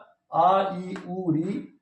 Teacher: दूसरा जो भेद है दीर्घ स्वर का आ इ उ ऋ इनके उच्चारण में दो मात्रा काल का समय लगता है